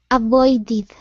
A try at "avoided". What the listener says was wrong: Okay, almost. So with that, okay, and it's tricky. It's tricky. So your tongue has to stay in the same spot. Right now, you're pronouncing the first D, and then after that, your tongue moves forward to the Spanish D position. Okay, so you can't pronounce the Spanish D touching your teeth. Okay, it has to stay in one spot.